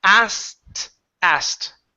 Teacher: Okay, so there isn't a need to pronounce the K. Okay, so the K doesn't need to be pronounced